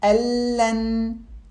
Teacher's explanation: Here we have a Noon Sakina in one word immediately followed by a letter of Idgham, lam, in a separate word. The Noon gets combined with the letter of Idgham, lam, to create a single letter with a shadda